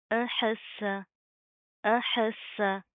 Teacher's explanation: سین کو آپ نے صاد نہیں بنانا، ٹھیک ہے؟ پراپر اس کی ادائیگی کریں گے، سین کے اندر سٹی پائی جاتی ہے